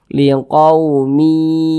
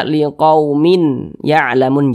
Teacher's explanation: tanda baca tanwin berjumpa dengan huruf ya hukumnya adalah idgham bhunah cara membacanya itu dengan cara memasukkan kemudian disertai dengan ghunah atau disertai dengan dengungan